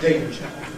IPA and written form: ˈdeɪnʤə (danger)